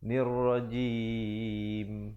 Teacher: nun baris bawah terus naik di atas ra yang bersabdu. Nirrajim, dan tutup mulut rapat untuk menyempurnakan bunyi mim dengan kadar 2, 4 ataupun 6 harakat.